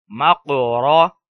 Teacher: زبر کی وجہ سے را پر پڑھی جائے گی موٹی آواز کے ساتھ پڑھی جائے گی